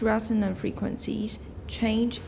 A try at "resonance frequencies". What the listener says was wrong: These resonance frequencies. When you read it the first time, I thought it was these resonant frequencies, which would be okay because then it would be a phrase, adjective plus noun. So your pronunciation, your stress is going to affect how your hearer hears things.